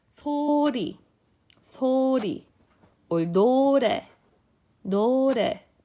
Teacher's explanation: the tongue moves further back and it flickers